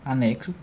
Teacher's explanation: A gente tem a figura do dífono, que é quando a letra X ela está representando aqui dois fonemas, o fonema K e o fonema S